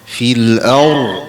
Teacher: dia tebalkan sikit ya huruf bunyi ra tu.